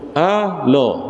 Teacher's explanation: sebutannya adalah bermula dengan alif di atas A, bunyinya A, bukan O